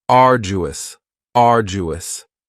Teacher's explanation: three syllables and the stress is on the first syllable uus now you don't hear that D sound that much it's not very strong it almost sounds a little like a j